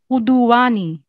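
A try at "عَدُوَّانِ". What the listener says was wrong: अदुव्वानी, उदुव्वानी क्यों? ऐन पर जबर है, पेश नहीं है। अदुव्वानी।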